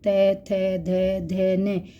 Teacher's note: यहां हमारी जीभ दांतो को स्पर्श करती है